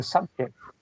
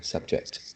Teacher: So the stress should be at the first syllable.